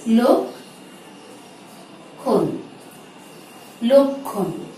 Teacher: ক্ষয়ের উচ্চারণটি প্রাধান্য পেয়েছে, কিন্তু ক্ষীয় বর্ণটি যদি শব্দের মাঝে থাকে এবং শব্দের শেষে থাকে তাহলে প্রথমে কয়ের মতো তারপরে ক্ষয়ের মতো উচ্চারণটি হবে